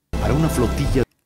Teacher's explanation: La A de para fue omitida.